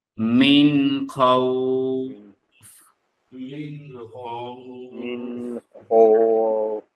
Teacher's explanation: নুন সাকিন তানবিনের পরে খ আসছে, স্পষ্ট করে পড়বো গুন্না ছাড়া।